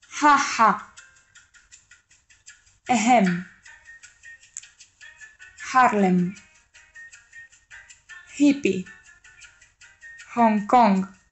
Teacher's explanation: Com sabem, la H és una consonant muda, però en alguns casos, com les interjeccions o els estrangerismes no adaptats, es pronuncia aspirada